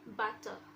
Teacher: The letter R is not silent in American English, but it's silent when it is in British English. For example, butter.